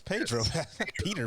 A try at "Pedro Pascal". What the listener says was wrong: It sounded like you said Peter Pascal.